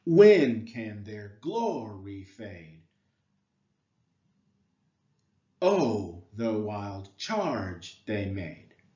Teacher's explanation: a stressed syllable followed by two unstressed syllables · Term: Dactyl